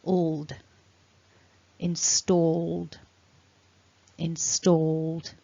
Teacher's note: we've got the d that comes on after that voiced consonant